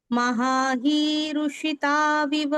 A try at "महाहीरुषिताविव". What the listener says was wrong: very good